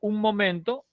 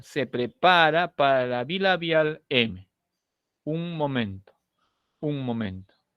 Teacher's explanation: si digo un momento he juntado los labios